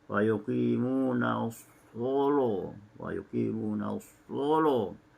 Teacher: ada qiraat yang membacanya dengan taghliz, dengan tebal lamnya